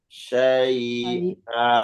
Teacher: kalau kita wakaf di tanwin, maka dihilangkan tanwinnya, diganti dengan mad panjang